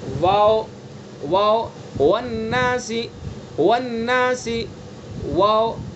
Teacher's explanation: اگر ہونٹ مل جائیں گے تو پھر باؤ بن جائے گا یا ماؤ بن جائے گا، تو لہذا دونوں ہونٹوں سے واو کو ادا کریں گے لیکن ہونٹوں کو ملانا نہیں ہے۔ تو وہی بتلایا کہ دونوں ہونٹ جبکہ پورے نہ ملے، اس سے واو ادا ہوتا ہے، واو واو، والناسی والناسی، واو۔ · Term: واو متحرک, واو متحرک واو لین